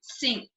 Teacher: Medial n is pronounced ng before k and g sounds.